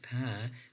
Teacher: are producing p means that we are making a bilabial sound a sound which is produced by Two Lips in terms of place of articulation